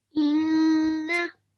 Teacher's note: So just one thing, the first word, okay, on top of noon we have tashdid. So we are going to stress on it, and we are also going to make nasal sound.